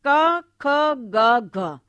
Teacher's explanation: उच्चारण में जीवा का पिछला भाग जो है वह हमारी जो जीवा का पिछला भाग कोमल तालू का स्पर्श करता है कोमल तालू को छूता है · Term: कंठे ध्वनि